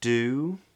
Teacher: made with the tip of the tongue coming up for the D